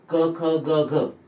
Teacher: यांचा उच्चार कंठ्य असतो, म्हणजे आपल्या कंठातून त्यांचा उच्चार होतो